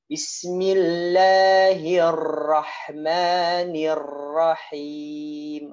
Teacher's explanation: Nah, bergetarnya itu pada huruf ro. Ro memiliki sifat takrir. Berarti ro bergetar.